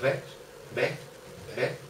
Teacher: no somos capaces de decir ves, decimos ve